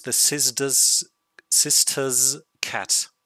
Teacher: You see that the pronunciation turns to a z sound